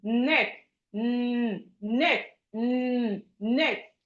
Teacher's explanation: Your tongue will be touching your gum like this. Neck neck neck.